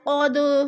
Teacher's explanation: دال ساکن ہے اور حروف قلقلہ میں سے ہے، تو اس لیے ہم نے اس کو ہلا کر پڑھنا ہے